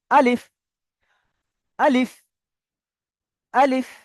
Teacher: আলিফ সম্পূর্ণ বিনা টানে পড়তে হবে